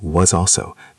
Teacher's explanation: the s in was is a z. It links to also